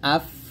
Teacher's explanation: বাতাস বের করে এখানে হামস হবে এটা বাতাস বের হবে